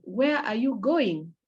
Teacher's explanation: The going has a higher pitch so that somebody gets the point that you're asking a question. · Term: high intonation